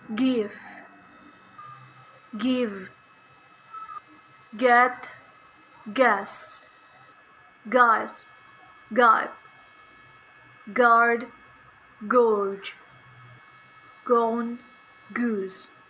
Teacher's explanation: voiced velar stop sound